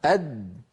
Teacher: لاحظوا بأن الدال ينقفل مخرجها تماما